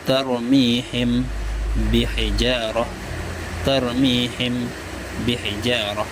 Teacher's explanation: Maksud samar itu tidak sejelas ketika izhar. Ketika mengucap mim mati, bibir tidak tertutup rapat secara penuh dan tidak terbuka, samar-samar antara izhar dan idgham. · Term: ikhfa syafawi